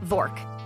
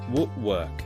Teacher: The w sound is different. Yes, your lips go forward, work work. Not v, it's w.